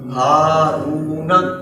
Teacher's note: پر را واو پیش رو ہا رو نون زبر نا ہارون ہا کو لمبا کیا رو کو لمبا کیا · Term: مد اصلی